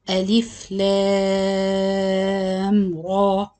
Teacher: The lams, mad lazim harfi mukhaffaf, six count. Then the ra, mad tabi'i harfi, two counts. · So the lam here is still six count, but the type of mad here, we call it mad lazim harfi mukhaffaf.